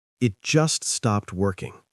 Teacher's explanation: Remember to stress the word just to show it happened recently.